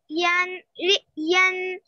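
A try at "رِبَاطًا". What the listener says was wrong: Ri is long. Ri.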